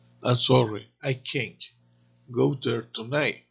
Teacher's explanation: Acentuamos la palabra can't cuando es negativa. Además, curiosamente, no es necesario pronunciar la T, ya que la diferencia real entre can y can't es simplemente la acentuación.